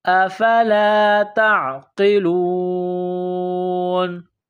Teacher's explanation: ربکم افلا، افلا تعقلون، نقطوں والی تا ہے، اس کو باریک کرنا ہے، تا کو عین کے ساتھ ملانا ہے، قاف کو موٹا کرنا ہے۔